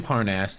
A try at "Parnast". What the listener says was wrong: You went to Verathul, and now you're bringing the stuff back to Parnast. Parnas. Parnast. Parnast with a T.